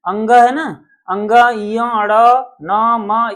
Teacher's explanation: नासिका नाक से इनका उच्चारण होता है। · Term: नासिका वर्ण